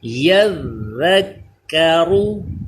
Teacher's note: یذکرو یعنی بعض لوگ پڑھ دیتے ہیں یذکرو، ایسے وہ زا بن جاتا ہے، ہم نے ذال ادا کرنا ہے زبان دانتوں سے چپکا کے